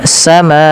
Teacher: panjangkan huruf ma sepanjang 4 atau 5 harakat dan tidak boleh dikurangi ya teman-teman, karena di sini ada namanya mad wajib muttasil.